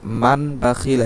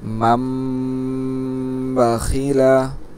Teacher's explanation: নুনকে মিম দ্বারা পরিবর্তন করে গুন্নার সাথে পড়ব